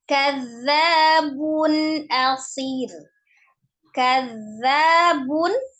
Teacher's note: tanwin bertemu dengan huruf alif dibaca izhar ya dibaca jelas